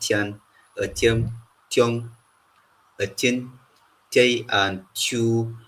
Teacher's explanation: And then we have the palatal form of the T sound